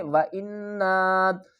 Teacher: نون الف مد زبر نا، 3 الف کی مقدار اسے کھینچ کر پڑھیں گے